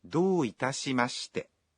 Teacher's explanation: When you say, どういたしまして, you say the vowel o in do one beat longer.